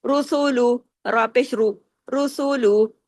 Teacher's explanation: را کو ہیوی اس لیے کیا کہ را جو ہے یہ پیش کے ساتھ ہے. را 2 حالتوں میں ہوتا ہے نا، ایک زبر اور ایک پیش، اس میں ہیوی ہوتا ہے، زیر کی حالت میں نہیں ہوتا.